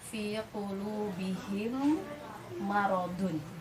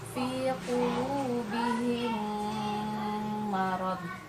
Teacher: pengucapannya harus disertai dengan harus keluar dari rongga hidung dan harus ditahan gitu ya. Tadi kadar panjangnya adalah 2 harokat gitu ya. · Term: Idgham shaghir